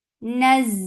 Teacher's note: for fatha jaws, give rakhawa and safir on za